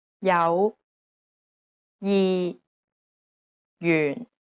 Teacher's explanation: although it's represented as a j it actually sounds like an English Y sound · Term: J consonant